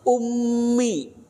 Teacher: di situ ada mim musyadadah mim tasdid harus ditahan dua harakat